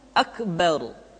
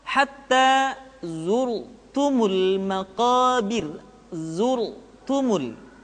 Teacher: Huruf ra mesti dibaca tafkhim atau dibaca dengan suara yang tebal ketika dia berharakat fathah atau berharakat dhammah.